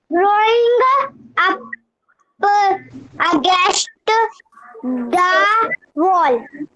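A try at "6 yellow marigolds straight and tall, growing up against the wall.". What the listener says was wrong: हाँ आपने बोला जरूर, लेकिन रुक रुक के बोला है, ठीक है।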